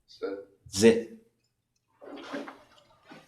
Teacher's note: Z sound, right? Because it's like voiced.